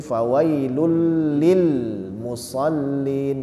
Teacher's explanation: Jadi fawailul lil musallin, jangan fawailul lil musallin, ada le-nya. Jadi tidak boleh ada pantulan di huruf lam sukun.